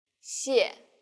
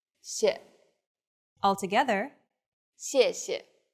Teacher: The tone in the first syllable is the fourth falling tone, 谢. and the second syllable is the neutral tone.